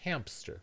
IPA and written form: hæmpstəɹ (hamster)